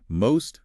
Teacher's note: Most has a longer O sound